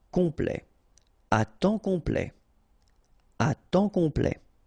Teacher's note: OM is nasal here, just because you get your P after that. So it's on.